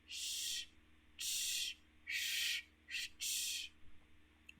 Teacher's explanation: коли ми їх вимовляємо вони начебто шиплять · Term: шиплячих приголосних звуків